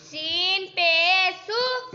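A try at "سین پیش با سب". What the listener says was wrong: غلط. اوپر دیکھو آگے با پر کل جزم ہے. ملانا ہے.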